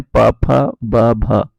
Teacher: ये दोनों में क्या होता है, हमारे होंठ आपस में मिलते हैं। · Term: ओष्ठ